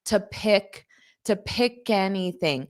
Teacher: this to will become more of an unstressed T.